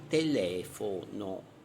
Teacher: Sdrucciole, l'accento cade sulla terzultima sillaba, esempio telefono.